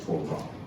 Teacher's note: The accent would be on the second syllable